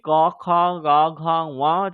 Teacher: জিহার যে একদম শুরু অংশ সেটা কন্ঠের সঙ্গে স্পর্শ হচ্ছে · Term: কণ্ঠ